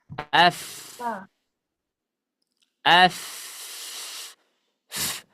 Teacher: Huruf fa makhrajnya ada di perut bibir bawah. Nah, ya, perut bibir bawah ketemu dengan gigi seri atas